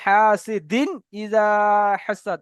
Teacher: তানবিনের আওয়াজকে আমরা বিনা গুণনায় জাহির করে পড়বো